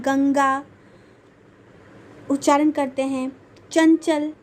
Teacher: मैंने बताया था कि अनुस्वार में क्या होता है, नाक से हवा निकलती है।